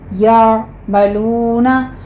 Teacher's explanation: लू में वाव मद्दा के बाद हम वक़फ़ कर रहे हैं तो मदारिस वक्फ़ी होगी, यहाँ पे हमने 6 काउंट कर लेना है